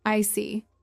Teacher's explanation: your tone drops slightly to show calmness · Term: falling tone